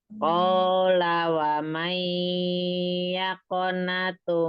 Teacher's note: Qala wamai itu adalah idgham bigunah karena nun sukun bertemu dengan ya.